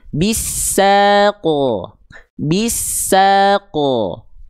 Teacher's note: Kenapa lebih tepat? Karena dia dipantulkan. Ya, tidak ditahan dan dibaca dengan keadaan yang tebal.